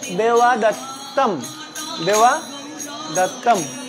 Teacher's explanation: এখানে দেখো ব যদি মাঝখানে থাকে, সংস্কৃত উচ্চারণে যদি ব থাকে মাঝখানে শব্দের মাঝে, তাহলে এটা উয়ার মতো করে উচ্চারণ হবে, ব ইকুয়াল টু উয়া।